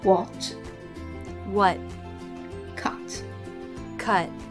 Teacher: in American English they tend to drop the T in the final position